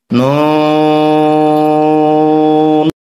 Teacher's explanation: 4 আলিফ টানতে হবে, জিহ্বার আগার তালুতে লাগবে।